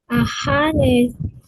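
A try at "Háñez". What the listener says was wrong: Hañez, porque es una Z, la Z es Z, Hañez,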